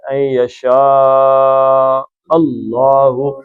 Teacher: اللہ کا لام موٹا پڑھنا ہے، پیچھے زبر آ گئی ہے